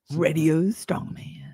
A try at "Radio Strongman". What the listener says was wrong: No, it's Radio Strongman. You got to do it deeper.